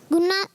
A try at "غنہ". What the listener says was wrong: ایک گنہ ہوتا ہے, غنہ ہوتا ہے. غنہ غین سے یا گھاف سے؟ غنہ غین سے غنہ ہوتا ہے ماشاءاللہ. غین سے غنہ, اور غنہ غین سے.